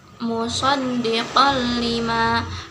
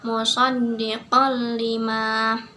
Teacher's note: Di situ ada tanwin bertemu dengan huruf lam, maka tanwin ini langsung dimasukkan ke dalam huruf lamnya, musaddiqal lima, tanpa disertai dengan dengung atau gunah. · cara membacanya yaitu dimasukkan atau dileburkan ke dalam huruf berikutnya tanpa disertai gunah atau dengung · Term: idgham bila gunah